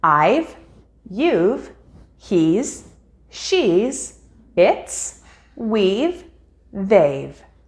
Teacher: To do this, drop the HA of have and has and replace it with an apostrophe in writing, leaving simply the S or V sound at the end of the subject when speaking